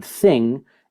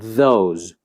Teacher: the tip of the tongue is coming between the teeth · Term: interdental fricatives